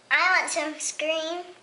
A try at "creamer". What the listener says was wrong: It's not scream. It's creamer.